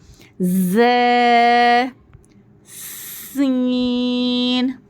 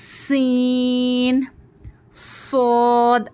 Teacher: नहीं हम जबान की नोक को वगैरह कुछ हरकत नहीं करेंगे जबान की नोक नीचे से ही नीचे के दांतों के कॉर्नर्स को लगेंगी और हमारे जो दांत होंगे ना इस तरह से होंगे हमारे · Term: हुरूफ सफीरा